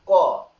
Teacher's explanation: এই ক টা উচ্চারণ করা হয় কণ্ঠ থেকে গলা থেকে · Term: কণ্ঠবর্ণ